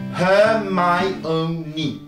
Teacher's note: l'accent sera placé sur la syllabe Mi · On pourrait penser qu'il n'y en a que 3, mais en réalité, le O va faire syllabe à part entière, puisque on va bien sûr se retrouver avec une séparation entre le I et le O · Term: 4 syllabes